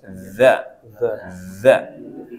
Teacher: Nah, lidahnya sedikit keluar ketemu dengan gigi atas